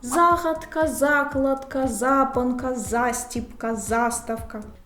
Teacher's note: четверта група слова з наголошеним префіксом за